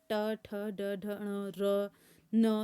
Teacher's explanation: सब में हमारी जीवा ऊपर मूर्धन्य में टकरा रही है ना